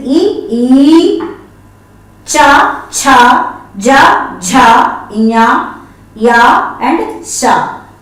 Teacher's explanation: are the palatals, Talavyas. Those pronounced from the palate.